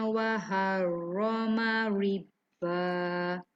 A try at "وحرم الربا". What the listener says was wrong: Wa harramar lebar sikit. Riba. Jangan maur. Maur tu jadi tebal. Bawah. Riba. Ya, bawah ada beza sikit.